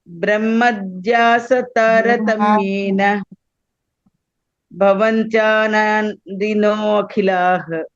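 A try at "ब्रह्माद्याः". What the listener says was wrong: Brahma, dirgham you have to pronounce. Brahmadyah taratamyena bhavanti anandino khilah.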